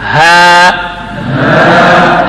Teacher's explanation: हा अदा होता है हल्क के नीचे हिस्सा अक्साए हल्क में